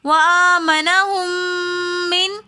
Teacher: وآمنہم کے میم کے بعد نون ساکن آ رہا ہے، لیکن آگے حروف حلقی میں سے ہا رہا ہے، تو یہاں پر ہم غنہ نہیں کریں گے